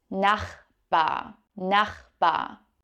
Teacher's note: It's a little bit difficult to pronounce with the CH sound here in the back of your throat.